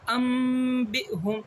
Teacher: نون ساکن اور تنوین کے بعد با آئے تو نون ساکن کو میم سے بدل دیں گے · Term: اقلاب